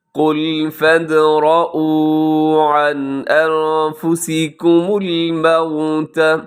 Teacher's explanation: عن میں نون ساکن ہے، نون ساکن کے بعد حمزہ ہے، اظہار حلقی